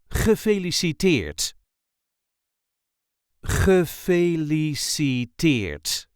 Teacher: there is a light emphasis on the last syllable